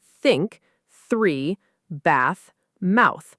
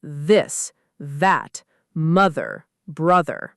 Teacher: voiceless TH is soft and airy, like in think, 3, bath, mouth. Voiced TH has a gentle buzz, like in this, that, mother, brother.